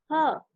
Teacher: गले के अंदर स्वर यंत्र के मुख से उच्चारित होने वाला वर्ण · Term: स्वर यंत्रीय